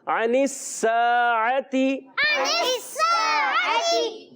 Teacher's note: عین کی ادائیگی حلق کے درمیان والے حصے سے, یہ بھی حروف حلقیہ میں سے ہے.